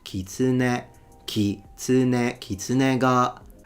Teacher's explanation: The Japanese, they don't stress any syllable and it's a heiban word. So it goes kitsune, kitsune, kitsune ga.